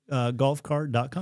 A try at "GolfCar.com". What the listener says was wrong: Car, no T.